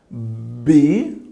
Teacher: Ela é uma letra bilabial, porque nós precisamos juntar os 2 lábios para conseguir falar ela.